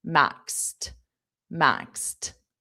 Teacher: notice that pronunciation maxed with a very soft t